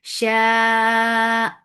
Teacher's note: لو شاء متصل واجب, make it 4 counts long without going into your nose. · Hamza is sharp and lafz jalala will be heavy because there is fatha before it.